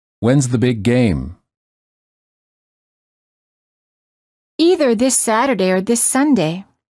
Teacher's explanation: notice how two same or similar consonants blend into one to link words more smoothly the final stops are not released